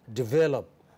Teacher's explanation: the second vowel from left is lost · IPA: /'devləp/